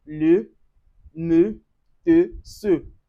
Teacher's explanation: The sound E, the stressless sound, the softest sound in French.